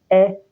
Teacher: Ẹ́ jẹ́ fáwẹ́lì àìránmọ́pè. Eléyìí fi ipò àfàsé wọ̀n. Ó dẹ̀ jẹ́ fáwẹ́lì iwájú pẹrẹsẹ. Tá bá wò níbí, a máa rí pé ó ṣe kíni o, ó jẹ́ fáwẹ́lì iwájú pẹrẹsẹ.